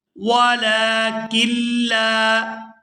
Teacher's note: یہاں کاف کو لام مشدد کے ساتھ ملائیں گے اور پھر لام جب اپنی زبر کے ساتھ پڑھا جائے گا تو کھینچ کر ادا کریں گے کیونکہ اس کے بعد الف مدہ ہے۔